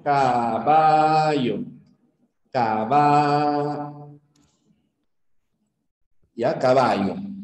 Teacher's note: el yeismo es pronunciar la eh doble l como si fuera una y lo pronunciamos igual ya la doble l como una y se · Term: yeísmo